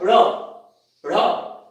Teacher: लेकिन जब इन दोनों का उच्चारण करते हैं ड़ ढ़, तो एक झटके से जीभ मूर्धा का स्पर्श करके और तुरंत छिटक के हट जाती है। तो इस छिटके हुए व्यंजन के कारण इसको कहा जाता है उत्क्षिप्त व्यंजन।